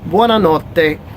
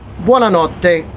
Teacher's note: So 2 T's again, double consonant sound. You emphasize that a little bit more